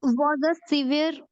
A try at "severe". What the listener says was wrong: Apne, what did you read? You read as sever. It should be severe. Severe.